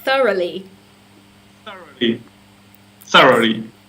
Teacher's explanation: so the stress is on the first. It's on the beginning of the word. Yes, it's a th sound.